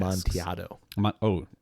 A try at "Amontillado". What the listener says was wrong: Amontillado. Don't pronounce the double L. Amontillado.